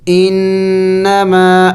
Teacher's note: نون مشدد ہے اور نون مشدد پر ہمیشہ غنہ کیا جاتا ہے